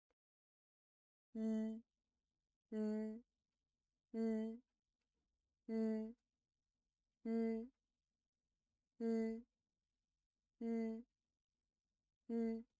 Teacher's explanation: Your airflow flows out from both sides of your tongue, not from nasal cavity